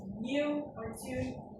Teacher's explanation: the y dropping, whether the y sound was like new or tune